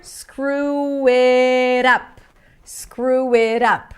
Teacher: We have like a W sound there.